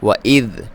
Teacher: ذال کو باریک پڑھنا ہے، اس پہ ساکن ہے، اس پہ جزم ہے